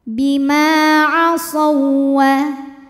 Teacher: Ma hukumnya adalah mad tabi'i zahiri karena ada alif didahului harokat fathah, maka mim panjang 2 harokat.